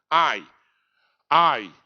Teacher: eu é um ditongo oral o som sai pela boca